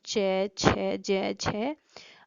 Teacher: एक उच्चारण अवयव दूसरे उच्चारण अवयव को स्पर्श करता है तो स्पर्श करते समय वहां कुछ रुककर बाहर जो वायु है कुछ रुककर बाहर निकलती है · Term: स्पर्श संघर्षी